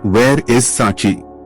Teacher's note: Your voice should fall at the end.